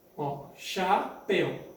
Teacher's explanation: Então, ela é oxítona, ditongo aberto em el.